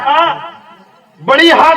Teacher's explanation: اس کا مخرج حلق ہے، حلق سے یہ ہا نکلتی ہے